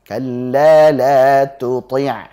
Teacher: Tuti harusnya tu-nya tipis, ti yang tebal.